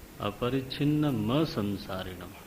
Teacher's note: पूरा म और म पर बल का प्रयोग करेंगे। अपरिच्छिन्नम असंसारिणम, तब उसका उच्चारण संधि उच्चारण माना जाएगा।